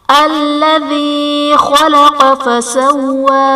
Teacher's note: خلق میں خاء اور قاف حرف مستعلیہ ہے اس لیے انہیں پر پڑھا جائے گا